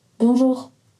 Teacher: ça va nous donner un signal dont la hauteur a monté vers la fin